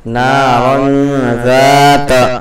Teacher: نون کی آواز کو ناک میں چھپا کر کے پڑھنا ہے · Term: اخفا